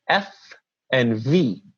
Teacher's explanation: watching the video you can see my face and see that the lower lip is touching the upper teeth and it's a fricative because it continues